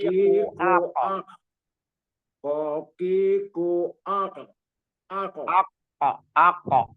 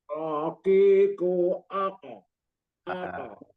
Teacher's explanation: Jadi untuk qaf itu tempatnya bagian lidah terdalam, paling dalam. Gitu. Jadi qaqiqu apa bertemu dengan langit-langit atas.